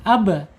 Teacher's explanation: Ba ini harus dipantulkan ketika sukun. Ab, baik qalqalahnya sugro ya maupun kubro.